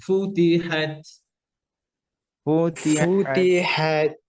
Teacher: শেষের তাটা হামস করবেন